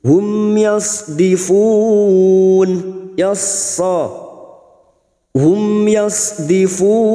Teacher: mim sukun bertemu ya Idhar syafawi mim sukun dibaca jelas tanpa mendengung